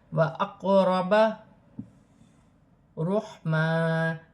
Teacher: قاف ساکن ہے، حروف قلقلہ میں سے ہے، قلقلے کے ساتھ ادا کیا جائے گا · حا ساکن ہے، حلق سے ادا ہوگا